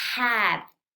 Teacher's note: es como la a que ya conoces pero tensa un poquito más los labios hacia atrás